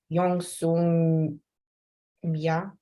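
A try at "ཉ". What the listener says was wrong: Nya. Nya with the N. Nya.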